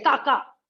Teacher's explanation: Now, if I drive away annoying animals and I say ka ka, so that is tone 6, short tone